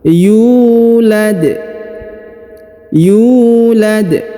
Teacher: huruf Yu ini dibaca Dua harakat karena di depannya terdapat wau berharakat sukun